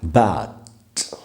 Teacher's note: ठ के जैसे बोलना ही है हमको वो रूल है लेकिन जब एंड में हो तो भी एस्पिरेट करना होता है लेकिन थोड़ा सा मतलब कम एस्पिरेट करना होता है